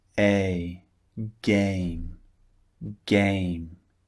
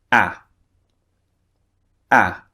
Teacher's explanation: However, the second vowel, the mouth is much further open.